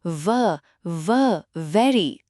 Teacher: वेरी में व की साउंड है। इसके लिए आपके ऊपर के दांत आपके नीचे वाले होंठ को छूते हैं।